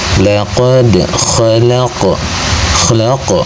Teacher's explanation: Maka ketika membacanya qf sukunnya dibaca dengan suara memantul. Pantulannya kecil. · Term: qalqalah sugra